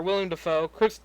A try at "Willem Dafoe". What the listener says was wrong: Willem Dafoe. you said William.